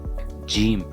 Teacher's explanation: These letters utilize a complex C-shaped rasm that dips below the baseline. Jim, a palatal affricate with a central dot.